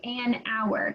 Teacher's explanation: so it's an hour because you don't pronounce the h